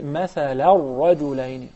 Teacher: I merge the sound of the noon in the tanween into the following letter, which is the ra.